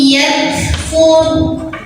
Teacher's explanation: Ra sukun dibunyikan secara tafkhim karena huruf sebelumnya yang fa barisnya dhammah, maka wa-nya tebal.